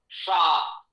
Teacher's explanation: शा, तालु पर जिह्वा जाए तो शा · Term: तालव्य शा